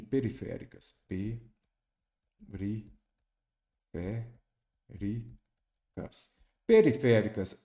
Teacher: periféricas, a antepenúltima sílaba é a tônica, então ela também é proparoxítona.